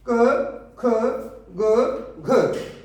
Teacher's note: क, ख, ग, घ ये हमारे कंठ से बोले जाते हैं, इसलिए हम इसको कंठे भी कहते हैं, या कंठ यानी कि कंठ से उच्चारण स्थान है इसका।